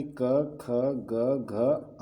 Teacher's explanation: ठीक है, तो कंठ व्यंजन इसके अंतर्गत खोटा की क, ख, ग, घ यानी कि कवर्ग अंगा को छोड़ करके, ठीक है, वर्ण शामिल है। इन वर्णों का उच्चारण कंठ के स्पर्श से होता है।